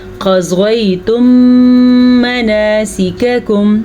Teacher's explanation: میم ساکن کو میم میں ملا دیں گے اور غنہ کر کے پڑھیں گے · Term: ادغام شفوی